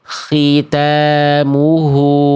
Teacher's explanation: Ingat, kho itu tafkhim nisbi. Berkurang kadar tebalnya ketika kasroh dia. Tetap tebal tapi berkurang.